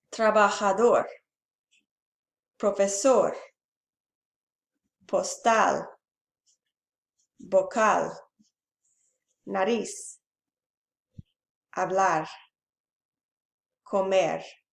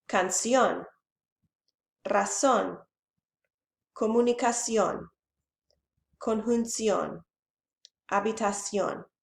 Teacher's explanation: The stress falls on the last syllable of the word. Aguda, stress on last syllable.